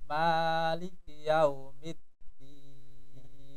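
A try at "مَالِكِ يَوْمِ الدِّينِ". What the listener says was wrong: Maknya terlalu panjang. Hanya dua harokat. Malik Yaumiddin.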